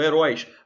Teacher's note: Agora, isso porque são oxítonas, ou seja, a sílaba tônica é a última. Você vê heróis, o ditongo aberto, oi, está no final.